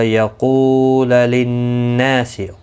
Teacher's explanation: قو واو مدہ ہے، نا الف مدہ ہے، دونوں کو ایک ایک الف کی مقدار کے برابر کھینچ کر پڑھیں گے. نون مشدد پر گنہ ہوگا.